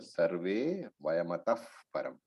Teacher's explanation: The visarga, when followed by pa varga, it changes into pa.